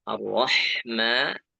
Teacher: A dibaca tipis, Ra dibaca tebal. Ar-Rahma, Ra-nya tebal, Ha-nya tipis, Mim-nya tipis.